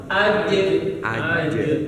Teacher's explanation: Menyebar di mulut udara atau angin menyebar di mulut Nah, di situ tidak ada makhraj dengan bibir monyong, nggak ada makhraj di situ. Jadi makhrajnya itu khusus tengah lidah ke langit-langit.